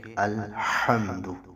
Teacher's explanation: شروع میں الحمد کو پڑھتے ہوئے جب آپ اس آیت کی ابتدا کریں گے تو الحمد نہیں پڑھنا بلکہ الحمد، ہا کو وسط حلق سے آپ نے نکالنا ہے